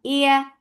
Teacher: light and soft when you are lifting your tongue up, but you are not touching the palate. This is the makhraj of ya, which is making it a light letter.